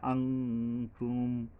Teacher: অনুস্বর যোগে বলতে হবে, আন নয়, আং তুম।